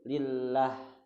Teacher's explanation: Ada juga nanti lam jalalah tarqiq, dibacanya tipis seperti lillah gitu.